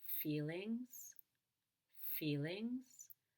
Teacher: want to hurt his feelings or I get anyone in trouble notice that I went down on feel and up on ings feelings feelings or get anyone in trouble I went up on